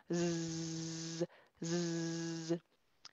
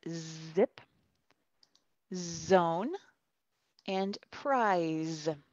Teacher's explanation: The letter Z is voiced. The vocal cords vibrate. · But with Z, vibrate the vocal cords, vibran, como un insecto.